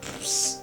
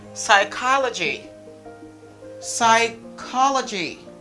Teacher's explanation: the letter P is completely silent. Don't say ps, no. Just eliminate.